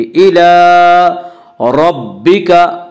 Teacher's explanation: रब्बिका की रा को पुर पढ़ा जाएगा। इसका कायदा है कि रा के ऊपर ज़बर पेश आए तो रा को पुर पढ़ा जाएगा, रा के नीचे ज़ेर आए तो रा को बारीक पढ़ा जाएगा, या रा के ऊपर ज़बर से रा को पुर पढ़ेंगे।